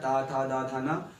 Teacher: दंते से बोला जाने वाला ता वर्ग होता है